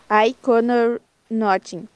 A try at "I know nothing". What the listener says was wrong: know nothing. A gente fala no aqui, ó. I know nothing. I know nothing.